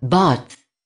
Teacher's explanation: In RP, words like bath are pronounced with a long A, bath. Up north in England it is a short A.